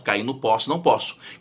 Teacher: Quando o paraguaio começava a falar o O aberto, ficava tudo aberto, cair no poço, não posso.